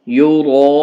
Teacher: را کو پور پڑھتے ہوئے لمبا کرنا ہے، 5 الف کے برابر بڑی مد ہے یہ